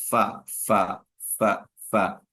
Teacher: نیچے کا ہونٹ کا تری والا حصہ اور اوپر کے دونوں دانت جو بڑے ہیں، اس کو ثناء اولیاء کہتے ہیں، ان کا کنارہ جب لگتا ہے تو اس سے فا ادا ہوتا ہے